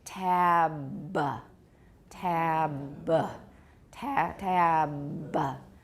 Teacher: you can add a little schwa at the end. And extend the voicing, pretend like it's the beginning of another word, and then you can usually get the voicing.